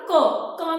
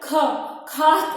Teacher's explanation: क में उतनी हवा नहीं निकलती, मुंह से प्राण उतने नहीं निकलते हैं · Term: अल्पप्राण